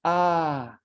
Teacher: la voyelle orale ouverte et tirée antérieure. Ah, comme dans date.